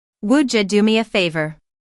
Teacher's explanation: Instead of would you, you'll often hear would ya. That's a natural reduction that happens in American English.